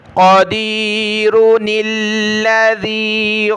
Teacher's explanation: اگر ملا کر پڑھیں گے تو چھوٹے نون کو لام کے ساتھ ملانا ہے، قدیر الذی، نون کو لام کے ساتھ ملایا، قدیر الذی خلق الموت والحیاۃ۔